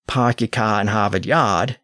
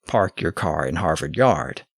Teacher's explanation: The classic New England accent that we associate with Boston is famously non-rhotic to this day. · people didn't tend to pronounce the R sound after a vowel